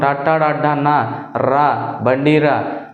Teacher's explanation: అంగిలి సహాయంతో పలికే వాటిని మూర్ధన్యాలు అంటాం